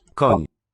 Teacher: This accented N is for palatal.